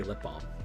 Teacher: they don't really bother with the l because it's so silent in the first place